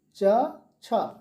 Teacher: जीभ का भाग ऊपर के तालु को टच करता है, इसलिए इनको कहा जाता है तालव्य या तालु से उच्चारित होने वाले व्यंजन। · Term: तालव्य व्यंजन